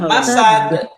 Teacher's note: মাসাদ অনেকে সাদ লম্বা করতে, লম্বা হবে না